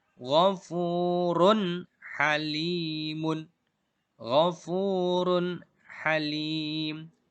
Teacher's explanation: Run halim itu jelas tanwinnya, dhammah tanwinnya atau dhammatainnya dibaca jelas. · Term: idhar